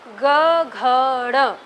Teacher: जब आप ग घ ड़ बोलते हो तो बहुत ज़्यादा झनकार हाथ में महसूस होती है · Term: स्वर तंत्र में कंपन